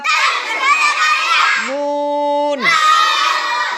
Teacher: 8 number মাখরাজ জিহ্বার আগার কিনারা সামনের উপরের দাঁতের মাড়ির সঙ্গে লাগাইয়া লাম। 9 নাম্বার মাখরাজ জিহ্বার আগা তার বরাবর উপরের তালুর সঙ্গে লাগাইয়া